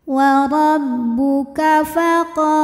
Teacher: qa mad tabi'i dhahiri karena ada alif didahului fathah, maka qaf panjang 2 harokat